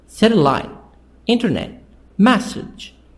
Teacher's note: So you have your 3 parts, but with stress on the first part. The sound is higher, louder, and longer.